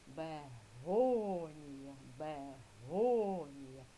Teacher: Наголошений склад го. Другий склад над голосним. О. Поставили рисочку.